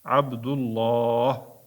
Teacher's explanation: Alloh lafziga bir alif qo'sshib o'qiladi. Ya'ni cho'zib uqiladi.